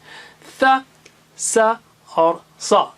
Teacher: صا جو ہے بہت موٹا اور اونچا ہے